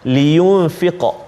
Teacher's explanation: Baik, dalam ayat ini pertama kalimah huruf kalimah liyunfiq. Iaitulah huruf qaf yang dalam keadaan sukun ataupun baris mati. So dia akan jadi qalqalah.